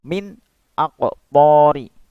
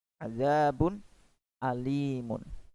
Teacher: Maka kita membacanya harus jelas. Nun matinya atau nun sukunnya itu terbaca dengan jelas. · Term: izhar